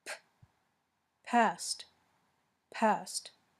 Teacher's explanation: the P sound is voiceless your vocal cords are not vibrating